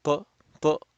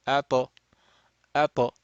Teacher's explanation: So we make the sound and the separating or moving the tip of the tongue away from the makhraj or the point of articulation of ta, okay, while your sound is still going will cause the sound of a qalqala